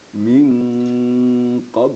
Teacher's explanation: Jadi dipadukan juga ya antara nun dengan qaf. Disamarkan suara nun ke dalam qaf gitu. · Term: ikhfa hakiki